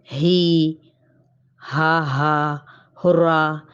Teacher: حلق کا آخری حصہ جو بالکل سینے کے قریب ہوتا ہے۔ اس سے 2 حروف حمزہ اور ہا، ٹھیک ہے، یہ ادا ہوتے ہیں۔ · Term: اقصائے حلق